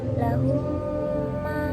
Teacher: Syafawi adalah Apabila ada mim sukun bertemu dengan huruf mim maka mim yang pertama ini diidamkan dengan panjang tiga harakat atau 1 setengah Alif pada mim yang kedua sehingga kedua mim ini menjadi satu huruf mim yang bertasdid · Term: idgham Syafawi